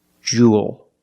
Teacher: It's pronounced the same as cool and pool. You have the long oo sound plus the dark L. There's no extra vowel.